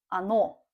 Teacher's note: Here, again, ano. You see, the stress goes on the last syllable, on the last vowel. That's why we don't say o. We say ano.